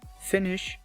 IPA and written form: fɪnɪʃ (finish)